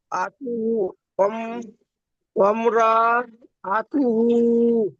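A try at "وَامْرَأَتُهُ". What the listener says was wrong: র টান হয়ে যাচ্ছে। আতুহু।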